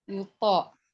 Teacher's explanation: To-nya itu qalqalah subro ya. Karena berada di tengah-tengah ya.